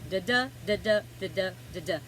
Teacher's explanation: Now, so the rhythm is also using iambic pentameter. So 5 pairs of unstressed and stressed syllables.